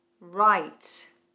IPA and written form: raɪt (Right)